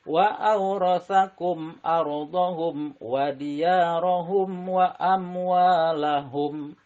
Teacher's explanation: harus jelas syafawi diantara dua bibir tanpa mendengung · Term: izhar syafawi